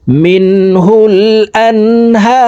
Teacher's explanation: হা এখানে 3 আলিফ টেনিয়া রকে সাকিন করে ফেলব। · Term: মদ্দা আরজি